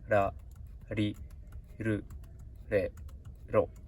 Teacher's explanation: It sounds more like English L sound, but I think it's like between R and L.